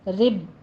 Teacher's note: را باریک پڑھتے ہوئے با کے اوپر تشدید ادا کیجئے